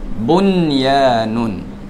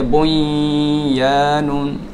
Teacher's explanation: Maknanya kalau ada tanda mati di atas nun, itu menunjukkan izhar bacaannya. Kena jelas nyatakan nun tersebut. Jangan panjangkan dengungnya.